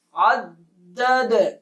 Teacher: قلقلہ کیا جائے گا، آواز کو ہلا کے پڑھیں گے۔